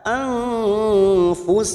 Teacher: nun sukun bertemu fa, ikfa hakiki, kita samarkan 3 harokat.